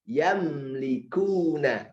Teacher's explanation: Huruf mim makhrajnya bagaimana? Bibirnya nempel. Yamlikuna. Maka jangan yam.